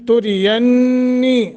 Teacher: را باریک، ینی نون مشدد ہے تو یہاں غنہ کریں گے اور نی حروف مدہ بن رہا ہے، ایک الف کے برابر لمبا کریں گے۔